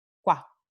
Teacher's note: esta U aquí es una semivocal o un alófono semivocal porque su pronunciación es más corta.